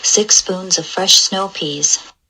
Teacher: she has that ooh still relatively where the ipa system says it's supposed to be